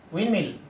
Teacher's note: In the word windmill, D is not pronounced.